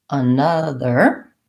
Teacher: When we have another, we add an N to our and we add a schwa, another sound before it. And we have stress on the syllable na, so we have short, long, short, another. In the symbols, what we'll see is that we add that the stress is in almost the same place, except that we have an N in our syllable.